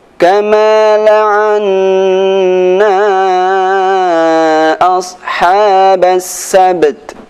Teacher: Nah, di sini ada huruf ba mati dan huruf ta mati. Maka sifat qalqalah pada huruf ba dan sifat hamz pada huruf ta, dua-duanya harus dibaca dengan sempurna.